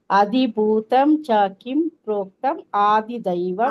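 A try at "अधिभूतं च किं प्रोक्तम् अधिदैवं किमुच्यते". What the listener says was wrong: ಆದಿ ಅಲ್ಲ ಮಾತಾಜಿ ಅದಿ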